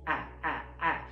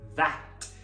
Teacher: Abre a boca do a, mas na verdade fala e. Aí vai sair a, a. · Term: ash